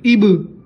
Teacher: اب کو ہم با سے ملائیں گے اب، جو آخر میں اب، اس طرح جو آواز آ رہی ہے اسے قلقلہ کہتے ہیں